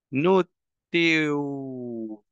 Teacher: Le quito la T, que es el problema, y le agrego W.